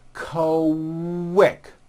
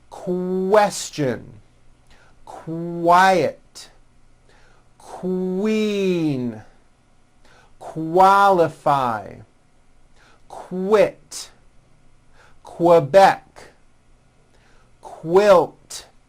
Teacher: the word quick is pronounced with a K and a strong W sound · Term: Q sound